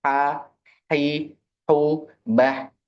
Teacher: Ha itu lebih terbuka tapi ada ya mungkin pergerakanlah di tengah tenggorokan sehingga ada serak-serak tipisnya